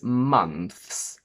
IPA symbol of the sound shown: θs